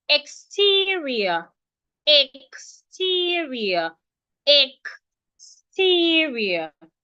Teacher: the sound that we have after the X is T, a voiceless syllable. So because it's a voiceless syllable, the X will sound kus.